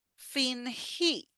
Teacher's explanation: notice here that I put a stress in the last E